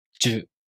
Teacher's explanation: To pronounce Ju, the tongue moves from the [ʑ] sound to the [ɯ] vowel.